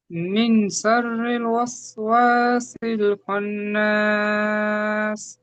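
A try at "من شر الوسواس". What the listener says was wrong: মিন শাররি নয়, মিয়া গুণনা করতে হবে। মিয়া শাররিল,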